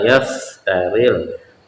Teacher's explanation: fa itu namanya syafatain, jadi dia dari bibir